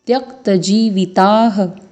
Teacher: त्य के बाद आप देख पा रहे हैं त्यक्त, अर्धवर्ण क और पूर्ण वर्ण त, तो त्यक्त जीविताः। ज में दीर्घ और व में ह्रस्व स्वर है और ता में विसर्ग लगा हुआ है